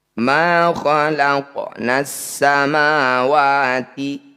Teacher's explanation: bunyi qof dipantulkan tapi sedikit saja atau mengalir saja pantulannya · Ma khalaqnas samawati, alif lam diikuti tasydid, disebut bacaan idgham syamsiyah atau alif lam syamsiyah. Alif dan lamnya abaikan, tidak usah dibaca, langsung pada huruf yang bertanda tasydid. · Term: Qalqalah sugro